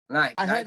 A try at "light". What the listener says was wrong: I heard as night. Say light. I know, but say the word light. Say the word light.